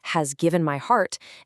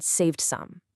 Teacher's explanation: We've got the heavy H in has given my heart, and then the much softer S in saved some. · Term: alliteration